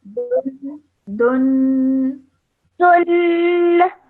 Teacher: dhammaten, you have to produce nasal sound for 2 seconds when you say the dhammaten. Okay, so I would say this bit as dun.